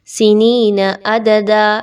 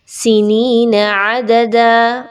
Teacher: عین کو کافی ڈیپ اچھے طریقے سے اس کے مخرج سے نکالنا ہے، حلق کے درمیانی حصے سے